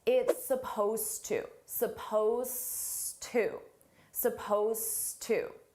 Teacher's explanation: Suppose is spelled with an ed d. It's an ed d verb, but you don't hear it at all.